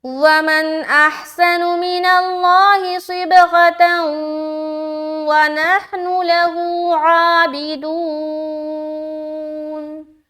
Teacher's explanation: دو زبر کی تنوین اور اس کے بعد حرف واو آ گیا تو ملا کر ادغام کریں گے غننے کے ساتھ